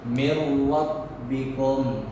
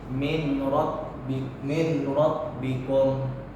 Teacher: nun mati bertemu dengan huruf ra jadi suara Nun tu akan hilang